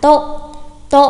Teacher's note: không đánh dấu sắc hẳn và nhấn nó thành tố nhá. Có rất nhiều bạn đọc sai phát âm là tố nghe rất là kinh.